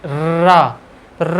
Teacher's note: अब जब आप र बोलेंगे र बोलिए आराम से। र बोलने से जब आप शुरू करेंगे और उसके अंत तक जीभ पूरा वाइब्रेशन मोड पे रहेगी। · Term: लुंठित वर्ण